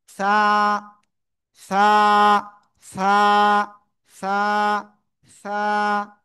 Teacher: জিব্বার আগা উপরে দুই দাঁতের আগায় লাগাবো, লাগিয়ে নরম করে বাতাস বের করব, তারপরে এক আলিফটা নিয়ে উচ্চারণ করব।